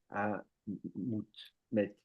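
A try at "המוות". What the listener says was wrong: À Mavet. À Mavet, il y a double vav. Mavet. Quand on met deux vav, il faut le prononcer comme en consonante. V. À Mavet.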